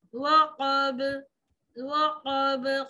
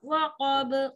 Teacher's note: قاف موٹا وقب قلقلہ نرمی سے